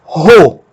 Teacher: Nós temos aqui um ômicron com uma aspiração forte, que é como uma aspa simples que abre. Então, o ômicron com aspiração forte vai ser pronunciado como RO e não apenas O, mas vai receber como que um som de um H do inglês aqui na frente, ou o som de um RR nosso.